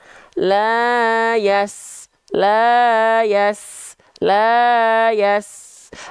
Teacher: lidah tuh lidah terdalam kita dia enggak diangkat engak PLN tapi PLT pangkal lidah turun kalau Sin Makanya dia bunyinya tipis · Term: huruf sin